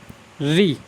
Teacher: री का जब हम उच्चारण करते हैं तो हमारी जीभ का जो अगला वाला हिस्सा होता है वो क्या है, मुड़ जाता है